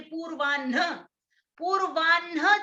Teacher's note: पूर्वाह्न जब हम बोल रहे हैं तो कंठ से भी पहले एक प्रयास हो रहा है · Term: संयुक्त हकार